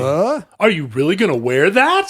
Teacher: the volume gives you the exclamation mark and the rising intonation gives you the question mark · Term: Rising intonation plus volume